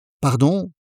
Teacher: let your voice rise at the end.